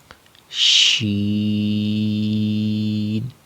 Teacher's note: شین کا جو مخرج ہے وہ وہی مخرج ہے جو جیم کا ہم نے پڑھا تھا، یعنی زبان کا بیچ والا حصہ اوپر تالو کے ساتھ لگانا ہے، یعنی وسط زبان وسط تالو کے ساتھ لگانی ہے. زبان کا درمیان والا حصہ اوپر درمیان تالو کے ساتھ جب لگائیں گے تو شین ادا ہوگا.